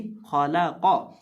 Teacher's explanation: दरमियान में जो लाम है उसको मोटा नहीं किया जाएगा, उसको बरीक पढ़ा जाएगा और खौ और कौफ को मोटा करके पढ़ा जाएगा। · वो पढ़ देते हैं खौला कौ, यानी इस तरह लाम को मोटा करके नहीं पढ़ना, हमने लाम को बरीक पढ़ना है।